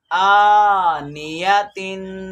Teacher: یہاں پہ یہ والا حرف جو ہے یہ حرکات مدہ سے حمزہ، اور دوسرا حرف جو ہے نون یہ حرکت والا ہے، یا بھی حرکت والا ہے، اور تا جو ہے یہ تنوین والا ہے۔ تو تا پہ ہم نے غنہ کرنا ہے، اور نون یا کو لمبا نہیں کرنا، جھٹکا بھی نہیں دینا، اور جو حمزہ ہے اس کو کھینچنا ہے کیونکہ یہ حرکات مدہ سے ہے۔